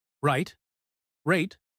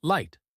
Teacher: The R is formed with the tongue slightly curled back, while the L places the tongue tip against the top of your mouth.